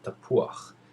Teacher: gum when the patak appears below a hat or an iron at the end of a word the vowel sound is pronounced before the letter itself